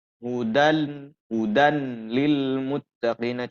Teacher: dengung contoh yang tanwin hujan-hudan Lil Muttaqin bertemu dengan lam kemudian dibaca tidak ada sama sekali penahanan atau enggak ditahan sama sekali tapi suara tanwin total atau seluruhnya menjadi hilang gitu ya maka di sini Kesimpulannya adalah tanpa ada suara Nun